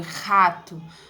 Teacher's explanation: O R glotal, ele é produzido aqui na altura da glote